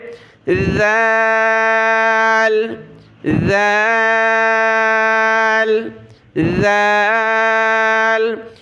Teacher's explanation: جیسے سا پر ہم نے زبان کی نوک دانتوں سے باہر نکالی اور اس کو ادا کیا نرمی کے ساتھ، اسی طریقے سے اس ذال میں بھی زبان کی نوک ہم نے دانتوں سے باہر نکالنے کے بعد آواز نکالنی ہے اور سختی نہیں کرنی، نرمی کے ساتھ اس کو ادا کرنا ہے. ذال.